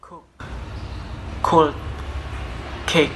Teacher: For the voicing is voiceless. the place is velar, and the manner is plosive.